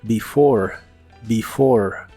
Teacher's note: La primera E se pronuncia como I y la E del final es muda.